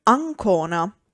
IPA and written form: anˈkona (Ancona)